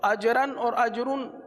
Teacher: را پر دو زبر کی تنوین ہو یا دو پیش کی تنوین ہو تو را کو پر پڑھتے ہیں. آپ کے مدنی قاعدے میں قاعدہ لکھا ہوا ہے کہ را پر دو زبر یا دو پیش کی تنوین ہو تو اجرن اور اجرن دو زبر دو پیش کی تنوین ہے، دونوں را کو پر پڑھیں گے.